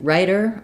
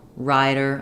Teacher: in writer I'm a little shorter on the vowel Rider I'm a little longer